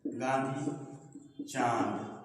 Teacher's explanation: इनके उच्चारण में वायु नाक और मुख दोनों से निकलती है। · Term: अनुनासिक